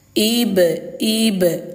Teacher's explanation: Di sini ayah bunda ada huruf ba. Ba-nya itu sukun atau mati dan berada di tengah kalimah. Maka hukum tajwidnya adalah qalqalah sugro